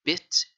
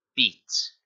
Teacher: Notice how pit is faster said than pint, or bit and beat. Notice how bit is faster to say and beat is longer to say.